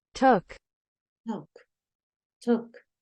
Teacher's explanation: Acuérdate que es como entre una O y una U. No es tanto took, es más took.